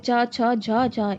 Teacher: स्पर्शी व्यंजन, जिन व्यंजनों का उच्चारण करते समय दो उच्चारण अव्यय एक दूसरे का स्पर्श करके तुरंत अलग नहीं होते, उनमें संघर्ष होता है, उन्हें स्पर्शी व्यंजन कहते हैं, जैसे च छ झ झ। इनके उच्चारण के समय जीभ के अलग भाग का तालु के साथ स्पर्श संघर्ष है